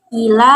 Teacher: Ila dibaca panjang 5 atau 6 harokat karena mad jaiz munfasil